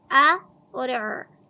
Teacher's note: आइन की आवाज को वस्त हलक से अदा करेंगे। हमजा और आइन की आवाज को अलग-अलग पढ़ेंगे।